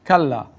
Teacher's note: So we have kal, and then the lam has to be pronounced a second time. But notice the lam is lengthened with an alif.